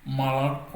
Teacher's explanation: l'accentuation se situe euh sur la dernière syllabe